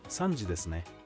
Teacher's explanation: you can confirm the time by responding with ne using a rising pitch